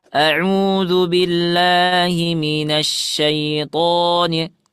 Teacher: Tonya jangan terlalu panjang. A'udzu billahi minasyaitonir. To 2 harakat saja.